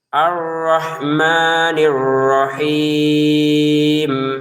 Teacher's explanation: Arrahman dua harakat. Arrahim enam harakat.